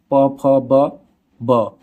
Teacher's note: ओठ। ब ध्वनि का उच्चारण स्थान ओठ होता है